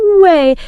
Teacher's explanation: If you just say no way flat, >> it's nothing. But with that big up and down pitch, you instantly get surprise, disbelief. · That big pitch change, maybe stretching the vowel a bit, way, it completely transforms the meaning.